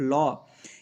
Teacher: एकमात्र ल ऐसा है जो आपका पार्श्विक व्यंजन है।